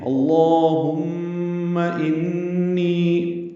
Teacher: نی یا مدہ ہے، 2 حرکات لمبا کریں گے